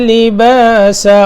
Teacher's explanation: لباسا سین باریک ہے، وقف بھی کریں گے تو آگے الف باریک ہو جائے گا